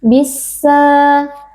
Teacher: Alif lamnya dibaca dengan dileburkan ke dalam huruf yang ada di depannya yaitu huruf Sin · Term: alif lam assyamsiyah